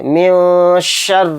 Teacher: را کے نیچے زیر ہے تو اس را کو بھی باریک پڑھیں گے، موٹا نہیں پڑھیں گے